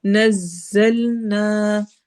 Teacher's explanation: نزا سیٹی والی آواز ہے